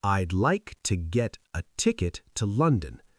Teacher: The important words like get, ticket, London, are longer and louder. The other words are tiny and fast. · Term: word stress